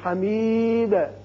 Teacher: دال ساکن پر آپ جب بھی قلقلہ ادا کریں تو قلقلہ کی صورت میں زبر زیر یا پیش کی مشابت نہ ہو